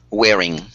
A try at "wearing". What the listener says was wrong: Yeah, it's good. Now, I think with your pronunciation, you might need a little bit of fine-tuning, but you know, it's very good.